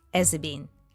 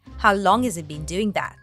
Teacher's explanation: The H sound in has is dropped, the T sound in it becomes a stop T sound, it. And the Z sound is linked to the following vowel sound. And so all three words form one chunk.